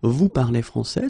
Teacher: We just need to raise the voice at the end. · So, of course, l'Académie française would like me to put them in the other order, but basically, you will hear many French people and many French-speaking people just keep the same order and raise their voice at the end